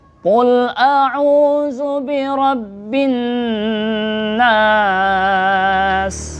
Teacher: nun tasydid ini termasuk huruf gunnah, yaitu artinya mendengung, dua harokat tempatnya di hidung. Jadi kita membaca ini ada rasa berdengung di hidung kita.